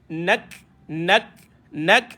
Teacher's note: [Musik] adaokeal Kalau boleh sambung lagi cantik nak nak Nun senyum Kaf mati keluarkan angin nak nak matikan huruf huruf lam Oke jadi nak angin keluar